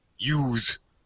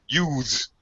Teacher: You may hear native speakers, Americans anyway, say use. They drop the th.